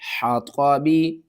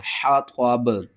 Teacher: با کے نیچے جو زیر ہے اس کو آپ نے ختم کر دینا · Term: وقف